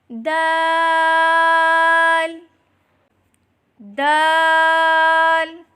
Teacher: زبان کی نوک اور اوپر کے دانتوں کی جڑ سے ادا کریں